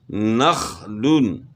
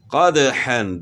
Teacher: دال حروف قلقلہ میں سے ہے، تو دال میں قلقلہ ہوگا، یعنی ہلا کر پڑھیں گے دال کو